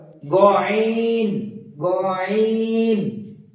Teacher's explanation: তো তারপরে আছে গয়ন, ঠিক একই ভাবে গয়নটা উচ্চারণ হবে, গয়নটা হালকা কণ্ঠনালীর উপর দিয়ে, আইনটা উচ্চারণ হচ্ছে কণ্ঠনালীর মাঝ থেকে এবং গয়নটা উচ্চারণ হবে কণ্ঠনালীর উপর থেকে